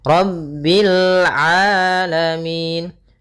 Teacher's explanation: Rabbil rnya tebal ro tafkhim.